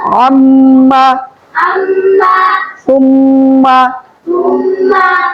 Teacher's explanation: 17 number মাখরাজ হচ্ছে নাকের পাশে হইতে গুন্নাহ